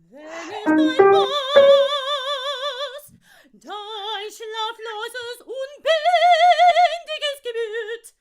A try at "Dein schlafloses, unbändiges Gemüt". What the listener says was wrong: Ja, that is exactly.